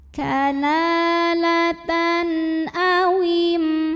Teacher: Ini hamzahnya a ya. Maka cara bacanya tanwin ini dibunyikan dengan izhar, jelas bunyi n-nya ya. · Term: izhar halqi